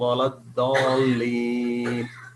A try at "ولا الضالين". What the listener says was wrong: Yes, but ضالين there should be mad 6 counts. ولا الضالين. ضا ولا الضالين.